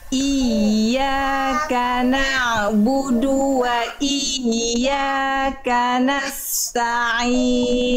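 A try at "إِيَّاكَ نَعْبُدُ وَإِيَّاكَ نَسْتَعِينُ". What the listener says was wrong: Sip, yang ini lebih baik ya. Yang ini lebih baik.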